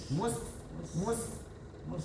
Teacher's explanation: Huruf sin itu kecil desisnya.